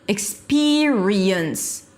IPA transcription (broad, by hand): ɪkˈspɪɹiəns